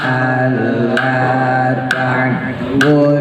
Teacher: wawunya nggak dianggap, masukin ke shin, shinnya tebelin.